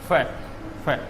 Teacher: अर्थात नीचे वाले दांत ऊपर वाला होठ आपस में टकराते हैं। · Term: अरबी फारसी वाला